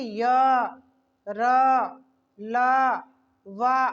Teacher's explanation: वर्णों का उच्चारण जीभ तालू के द्वारा जो किया जाता है बोला तो जाता है लेकिन वह पूर्ण रूप से स्पर्श नहीं करता · हमारी जिह्वा घूम तो रही है लेकिन मसूड़ों को, दांतों को, मूर्धा को, किसी को भी पूरा टच नहीं कर रही है, स्पर्श नहीं कर रही है, उसे कहते हैं अंतस्थ।